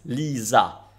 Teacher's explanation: In Italian, s between vowels vibrates into z.